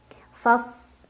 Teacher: shadnya punya ciri khas namanya sifat safir Ya ada desisan seperti Suara angsa · mengangkat lidahnya istilla juga itbaq